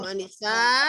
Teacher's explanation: Mat wajib mutasil maka dibacanya 4 sampai 5 harokat ya.